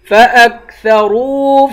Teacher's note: را کو واو سے ملا کر را کو پر پڑھیں گے